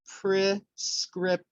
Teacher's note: the stress syllable is the second syllable